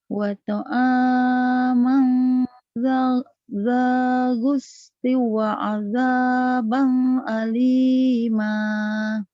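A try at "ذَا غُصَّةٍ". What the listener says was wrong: Zagusatiu. Ya, ketinggalan tadi sodnya. Zagusatiu. Dibaca double. Tasjid.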